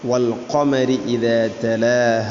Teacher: ഖാഫ് ചെറുനാക്കിൻ്റെ അടുത്താണ് അതിൻ്റെ മഖ്റജ്.